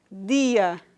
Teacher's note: já expliquei e porque é africada porque é a velo palatal Diferentemente do tcha o d é vozeado